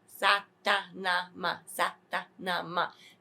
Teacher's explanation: So when you're going to say this, it's phonetically Satanama. The ta and the na, English people, the tip of the tongue touches the teeth, not the roof of the mouth.